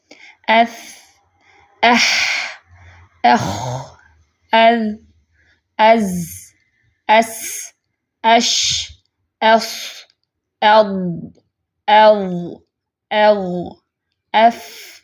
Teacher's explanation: رخوہ میں چونکہ سانس جاری رہتی ہے، اس لیے پھر ان کا جو وقت ہے، ڈیوریشن ہے، وہ سب سے زیادہ ہے ساکن حالت میں۔ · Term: حروف رخوہ